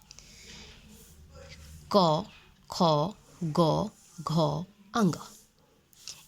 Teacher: इसका उच्चारण स्थान जिह्वा का पूरा स्पर्श कंठ से होता है।